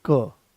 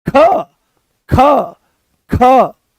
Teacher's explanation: आप मेरे साथ बोलो क, तो जैसे ही हमने क बोला, कोई ज्यादा जोर नहीं लगाना पड़ा, आराम से वो आ गया है क, कम प्राणवायु की आवश्यकता पड़ी, आराम से आपने उसको बोल दिया। पर जैसे ही आप बोलोगे ख ख, तो एकदम से क की अपेक्षा ज्यादा दम लगाना पड़ा। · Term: महाप्राण